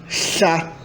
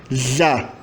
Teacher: A surda é escrita HL e a sonora é escrita DL. Então, essa consoante é pronunciada chá na versão surda e já na versão sonora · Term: fricativa lateral